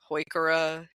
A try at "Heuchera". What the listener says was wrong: You hit the one that's my button. There is no chair in it. So what you have to know about a plant name is quite often Linnaeus had friends, and Johannes von Heucher was an Austrian and friend.